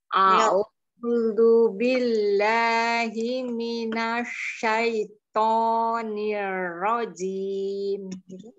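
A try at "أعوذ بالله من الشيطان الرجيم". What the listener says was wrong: Umi, ini jangan ujungnya, jangan ujung lidah, tapi agak sedikit ke dalam sedikit. Niro, niro. Niro, jim.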